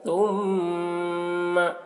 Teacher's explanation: ثم، تا کو بہت ہی باریکی کے ساتھ ادا کریں گے۔ ثم، اس طرح میم مشدد ہے تو میم میں غنہ کریں گے